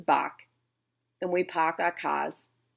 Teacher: if you're from Boston like me, there is no R.